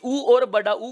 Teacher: इन स्वरों के उच्चारण में होठों का आकार गोल होता प्रतीत होता है। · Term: वृत्ताकार स्वर